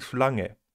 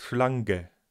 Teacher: Dabei wird kein [g] gesprochen, wir sagen ja nicht "Schlang-ge".